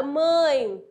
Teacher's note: Mãe, eu tô vendo que esse E tem som de I, não é mesmo? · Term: semivogal